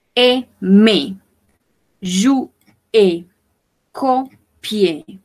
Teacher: Rappelez-vous qu'on ne prononce pas le R final.